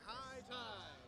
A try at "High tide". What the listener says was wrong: High tide. High tide! Louder.